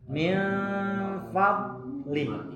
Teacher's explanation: Fadli. Caranya jangan dilepaskan Bu ketika sukun. Karena sifat dot itu itbaq itu artinya lengket.